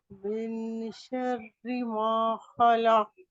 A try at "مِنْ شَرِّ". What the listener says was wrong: من نہیں ہے نون کی آواز ظاہر نہیں ہوتی.